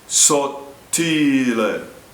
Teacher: In sottile, the first T is imploded. The tongue touches the roof of the mouth and stops. The second T is pronounced.